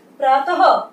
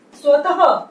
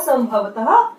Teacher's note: ये जो विसर्ग है ये ह की तरह यानी ह की ध्वनि देता है